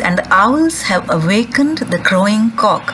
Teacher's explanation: owls, wake, crow and cock, these four syllables are stressed. So we have four stresses in each line.